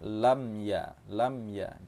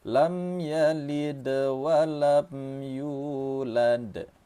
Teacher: jangan ditahan mim ini, mim mati bertemu dengan ya nama hukum tajwidnya izhar syafawi.